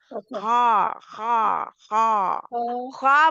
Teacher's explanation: खा खा के लिए हवा नहीं निकालनी खा खा खा खा मोटा है जुबान की जड़ ऊपर चली जाएगी